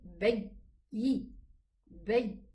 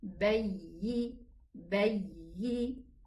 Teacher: The character of the ya is that it has rakhawa. It runs in the makhraj a little bit.